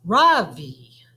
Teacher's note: in america people call me ravi with the stress on the first syllable